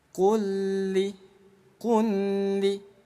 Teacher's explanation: Idgham mutamatsil itu nggak boleh dengung, harus dibaca lebur. · Jadi bunyi lam yang pertama dileburkan ke lam yang kedua. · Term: idgham mutamatsilain